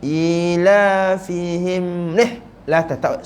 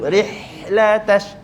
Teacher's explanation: Kena buat 2, angin dia lama sikit. Dia tak boleh baca rih, kena lamakan sikit dan hidup. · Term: hamas